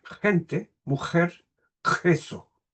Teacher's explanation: la pronunciación de gente o mujer es una pronunciación al fondo de la cavidad bucal en el velo del paladar es velar